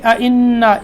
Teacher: انا کا نون مشدد یہاں غنہ ہوگا